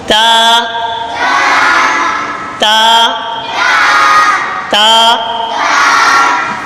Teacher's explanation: یہ زبان کی نوک اور اوپر کے دانتوں کی جڑ سے ادا ہوتا ہے